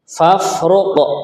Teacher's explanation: Nah, qof-nya sukun. Kita tunaikan sifat qalqalahnya.